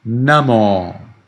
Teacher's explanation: You read this O long because it's at the end of the word.